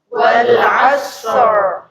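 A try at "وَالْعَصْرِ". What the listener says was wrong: Asatnya masih tipis. Wal asr.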